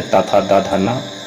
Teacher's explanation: तवर्ग का उच्चारण दंत से होता है, तो तवर्ग में त था उसमें 5 जो लेटर है त था द ध न वो सब आ जाता है, और ये दांत से इसका उच्चारण होता है, मतलब जीभ को दांतों में सटाना पड़ता है।